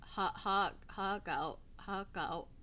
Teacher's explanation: you don't pronounce the R in hark out